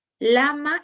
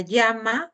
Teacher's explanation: se articulan con la salida del aire pulmonar por los costados de la lengua en la cavidad oral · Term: fonemas consonánticos laterales